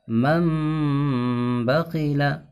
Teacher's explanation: نون کو میم سے بدل کر گنہ کے ساتھ پڑھیں گے، اس کو اقلاب کہتے ہیں۔